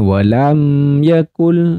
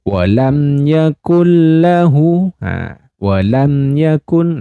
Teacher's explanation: hukum mim sukun bertemu dengan Ya Termasuk dengan izhar syafawi maka mim sukunnya dibaca jelas Wam Yakun lahu Wam Yakun nah seperti itu oke selanjutnya ini